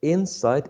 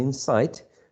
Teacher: the only difference is the primary stress where we place it if we place it in the first syllable we get insight if we place it in the second syllable we get inside